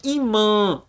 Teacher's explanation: Canal do nariz lá no fundinho então a gente fala imã ã vem lá no fundinho do nariz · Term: marca nasal